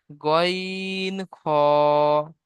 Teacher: হলকের বা কণ্ঠনালীর শেষ ভাগ হতে উচ্চারিত হয় গইন খ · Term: 3 নম্বর মাখরাজ